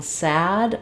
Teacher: when I'm saying sad my mouth is more open the front of my tongue is down the back of my tongue is lifted